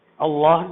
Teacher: اللہ کے لام سے پہلے زبر ہے، اللہ کو موٹا کر کے پڑھیں گے